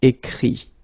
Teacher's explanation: phonetically this final T doesn't exist, okay? So the sound will be only this I, écrit, alright?